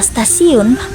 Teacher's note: pada kata stasiun bunyi T itu dilafalkan sebagai bunyi T laminoalveolar yang merupakan pengaruh progresif dari bunyi geseran laminopalatal S pada kata stasiun. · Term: asimilasi progresif